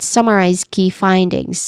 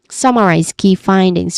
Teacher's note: summarize key findings with clear emphasis on sum and find